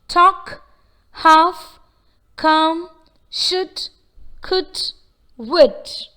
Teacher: The letter L is silent in certain words such as talk, half, come, should, could, would. That is, though we see the letter L in these words, there is no L sound in these words. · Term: L sound is silent